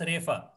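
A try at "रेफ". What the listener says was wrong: Repa. Repa. Right? Huh? Not refa. There's no fa, so repa. there's no pa in Sanskrit. Fa there is in Marathi also. Fa.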